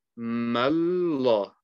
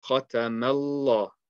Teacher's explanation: the initial sound of the lam is light, and it only becomes heavy once you make the sound of the standing fatha.